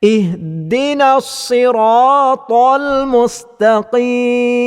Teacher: huruf ta juga salah satu daripada huruf istil yang mesti dibaca dengan bacaan yang tebal terutamanya pula huruf ta yang berbaris di atas maka ketebalannya berada